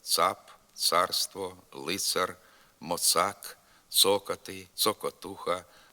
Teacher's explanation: у літературній мові звук ц вимовляється твердо тільки перед літерами а о у е и